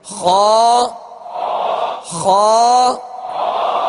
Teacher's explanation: خا کو پر کرتے ہوئے جڑ زبان کو آپ اوپر اٹھائیں گے تو خا ادا ہوگا، یعنی خا پر پڑھا جائے گا. اور اس کا مخرج مخارج کی لسٹ میں آپ دیکھ لیجئے، حلق کے اوپر والے حصے سے ادا ہوتا ہے.